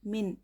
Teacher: नून साकिन के बाद काफ आया है, काफ ये हुर्फ इक्फ़ा में से हैं, इसलिए नून की आवाज़ को नाक में छुपा कर पढ़ेंगे।